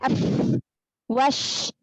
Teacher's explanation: Bibir bawah bagian dalam ketemu dengan ujung gigi seri atas. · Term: huruf fa